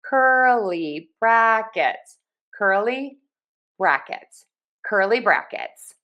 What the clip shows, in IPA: ˈkɝ.li ˌbræk.ɪts